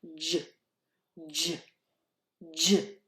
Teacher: J is a stop sound, meaning that it is made with a puff of air that comes out of our mouth. If you hold your hand in front, you'll feel that little puff of air.